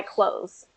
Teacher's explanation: that th gets swallowed up and you don't hear it. And so if you pronounce it as close, like close the door, mhm.